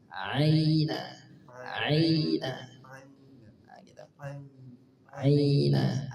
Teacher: tekanannya sedang tidak terlalu berlebihan tidak juga mirip seperti Hamzah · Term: Ain dialirkan